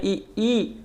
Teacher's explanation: मित्रों तालव्य स्वर में छोटी ई आती है और बड़ी ई आती है, क्योंकि जब छोटी ई और बड़ी ई का उच्चारण करते हैं ई है नहीं, तो इसके उच्चारण में जो हमारे जीभ का तालु वाला भाग है वो उसका उपयोग किया जाता है